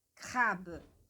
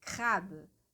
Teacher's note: lembrando que o E que está no final da palavra crab, ele é um E bem sutil. Inclusive, quando a gente estudar aí o E, a letra E, vocês vão ver que sempre quando o E ele está no final de uma palavra, ele tem um sonzinho bem mais sutil.